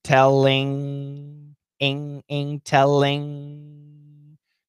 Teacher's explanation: And when we do the ING, the tongue, the tip of the tongue doesn't touch. The back of the tongue touches back in the mouth.